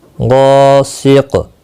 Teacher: قاف ساکن پر قلقلہ ہوگا غا الف مدہ ہے ایک الف کی مقدار کے برابر کھینچنا